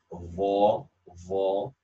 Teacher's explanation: Dha has isti'la, where you see the tongue in the back, rising.